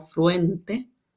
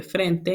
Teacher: la reducción del diptongo velar ue, que se vuelve e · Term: monoptongación